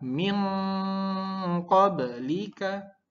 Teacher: Iqfa itu berdengung tapi disamarkan maka tetap tiga ketukan.